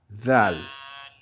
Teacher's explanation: comme un Z, la langue entre les dents